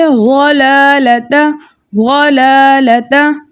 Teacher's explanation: लाम है उसके ऊपर ज़बर है, इसको बगैर खींचे बगैर झटका दिया पढ़ा जाएगा